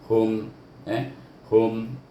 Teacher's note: Kemudian bertemu dengan kalimah lahum, lam baris atas la, naha baris depan hu, tapi dia mati dengan mim, hum, hum, jadi tak bunyi hu. Hum mesti tutup kita, mulut kita tertutup, dibaca dengan izah syafawi. Sebab ini ada mahraj mim mati dia.